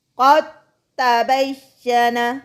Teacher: یہاں پر پہلا ساکن اور دوسرا مشدد ہے اور یہ مخرج کے اعتبار سے قریب ہیں. قد تبین، قاف زبر تا ساکن، قد تا زبر تا، قد تبین.